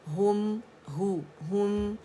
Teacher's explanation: ہم ہے باریک ہے، ہوم کر کے نہیں پڑھیں گے ، ٹھیک ہے، ہم ہے ہم، اور ایک کاؤنٹ کے لیے